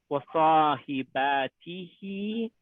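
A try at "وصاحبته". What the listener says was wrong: yes, but I don't want an alif here.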